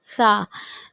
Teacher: سا میں ہمیں سیٹی نہیں نکالنی، سا کو باریک پڑھیں گے